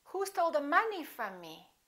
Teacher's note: From is a preposition, so we don't stress it. It's not a content word.